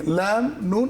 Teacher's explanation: নুনটা উচ্চারণ হয় ওই একই জায়গা থেকে, ল্যাম, নুন, একই জায়গা থেকে, জিহ্বার আগা, উপরের দাঁতের গোড়া